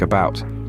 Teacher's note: it can also take on a softer sound in words like about where it's more of an ER than an A